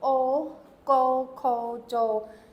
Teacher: shaped in your mouth like an an English o it's however it's more up near the back of your throat and your lips do not make the W sound